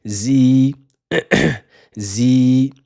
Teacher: il faudra prolonger le son i